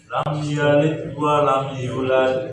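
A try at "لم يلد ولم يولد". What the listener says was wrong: Qalqalah. Kemudian yo-nya panjang. Lam yalid wa lam yulad. Lam yalid. Lam yalid bukan lam yalid tapi ada qalqalah. Lam yalid wa lam yulad.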